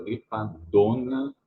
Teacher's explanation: there's a semi-nasal sound on dona